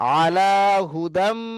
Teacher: যদি তানবিন বা নুন সাকিনের পরে মিম, ভালো করে লক্ষ্য করেন তো, এই যে তানবিন এসছে, এরপরে এই মিম এসছে, তাহলে তানবিন বা নুন সাকিনের পরে দেখেন মিম চলে এসছে। তাহলে তানবিন বা নুন সাকিনের আওয়াজকে ওই মিমের আওয়াজের সঙ্গে মিলিয়ে, মিমের আওয়াজের সঙ্গে মিলিয়ে একালিপ পরিমাণ গুণনা করে পড়তে হবে। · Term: ইদগামে নাকিস